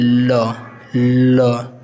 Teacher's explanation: उच्चारण में वायु जीवा के दोनों बगल से निकलती है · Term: पार्श्विक वर्ण, पार्श्विक